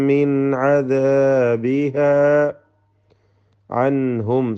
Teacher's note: സാക്കിന നൂൻ ഇൽഹാർ ഹൽക്കി മണിക്കാതെ വെളിവാക്കുക